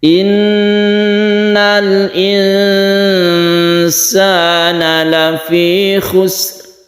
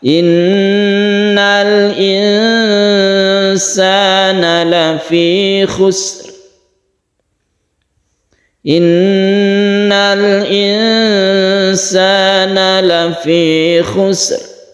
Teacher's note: Tasydid nun, guna musyaddada, kemudian ikhfa, ini didengungkan, dipanjangkan. Kita berhenti di sini sama dengan di ayat yang satu, jadi sukun ra-nya itu harus terasa.